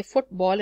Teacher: so in football you say football and both are given equal stress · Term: spondee